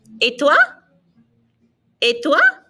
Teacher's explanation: in French it's the o i o and so it's etwa notice that the ET there's no T sound it's an a sound